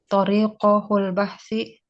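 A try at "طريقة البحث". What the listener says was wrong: Tarik. Bukan hu dia. Tak marbutah.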